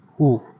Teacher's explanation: तो ये अ आपका कंठ हो गया और उ आपका ओष्ठ हो गया।